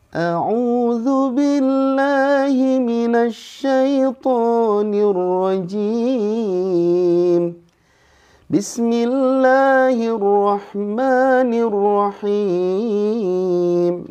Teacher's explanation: nadanya terlalu rendah, jadi dinaikkan ya, supaya nggak kesusahan pas turun